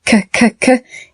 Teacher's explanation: K at the end of walk is what we call a voiceless sound. In other words, your voice box does not vibrate when you create the K sound.